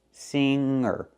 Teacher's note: So we see with the word singer, we do not pronounce the hard g.